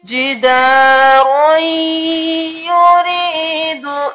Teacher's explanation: یہاں پہ ادغام ہو رہا ہے یا میں غنہ کے ساتھ، ادغام مال غنہ ہو رہا ہے، جداروئی، رو یا میں مل گیا